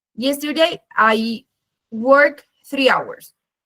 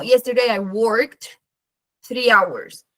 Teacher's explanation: es muy importante marcar la D al final, no tanto la ED, pero sí la D.